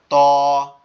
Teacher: ত, ত উপরের ইয়ের সাথে মিলাইয়া জিব্বার মাথার থেকে বলতে হবে। ত জিহ্বার আগা উপরের 2 দাঁতের গোড়ার সঙ্গে লাগবে, লেগে উচ্চারিত হবে লাগবে।